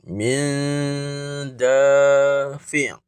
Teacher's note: Yang ini kena dengung yang nipis. Ikhfa hakiki, nun mati jumpa dal. Dan ini pun dibaca dengan dengung dua harakat. Jangan tak dengung, jangan baca dengan jelas, baca dengan dengung sebanyak dua harakat.